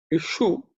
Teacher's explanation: the Sha, which is cerebral Sha. So the tongue should raise up.